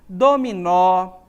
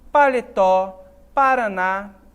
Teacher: em aqui porque essas palavras são acentuadas porque eu tenho oxítonas palavras que são oxítonas em que a sílaba tônica tá no final é a última sílaba